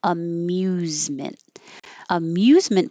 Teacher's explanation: So, after you make the M, the M, your tongue should be in the high position for a Y.